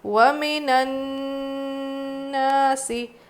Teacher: الف مدہ ہے، کھینچیں گے اور نون پہ اچھے سے غنہ کرنا ہے۔